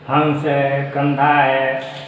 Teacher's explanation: अनुस्वार में जैसे नाक से इसकी ध्वनि निकलती है